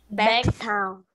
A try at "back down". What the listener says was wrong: Não é town, é down. Back down, ok?